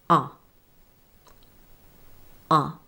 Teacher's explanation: say ah with the tongue low center and the jaw open